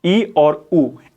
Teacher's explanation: ई और ऊ इनके उच्चारण में अगर आप करके भी देखेंगे, जोर से बोलकर देखेंगे, तो आप पाएंगे इनके उच्चारण में आपका मुंह बंद हो रहा है। तो ये आपके संवृत स्वर हैं, ठीक है।